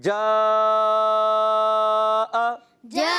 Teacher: دو ڈھائی الف, اس مد کو کوشش کریں ڈھائی الف کھینچیں